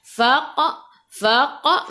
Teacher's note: Faq, faq, masuk ke dalam qaf, qaf ada sukun, kena melantun, lantunannya kecil, qalqalah sughra.